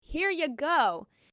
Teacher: Link hear you into hear ya. This makes it sound friendly and natural.